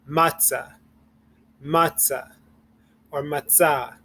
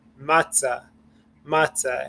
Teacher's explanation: So you're going to emphasize the second syllable.